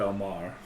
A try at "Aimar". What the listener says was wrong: It's not Amar. A-I-M-A-R.